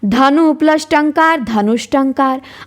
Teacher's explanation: अब विसर्ग के बाद ट आ गया तो वो मूर्धन्य स में बदल गया